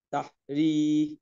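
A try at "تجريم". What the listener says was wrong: না, জিম ওইটা, তাজ। টান হবে তাজরি।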